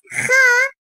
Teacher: Boğazın üst tarafından, ağızda bitiştiği yerden dil kökünün kabartılmasıyla çıkarılır. Hırıltılı ve kalın seslidir. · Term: hırlatmalı H